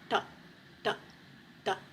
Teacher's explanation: Our first sound is da, da. This is a retroflex da sound. So your tongue is going to touch that roof of your mouth, da, da, da.